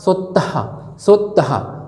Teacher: विसर्ग मतलब सांस निकलना, आखिरी में ह का प्रोनाउंसिएशन निकला, जैसा सोत्तहा सोत्तहा ह का प्रोनाउंसिएशन निकलता है।